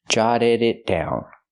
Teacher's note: The double T is a fast D, jotted, and the D at the end of the verb is also a fast D.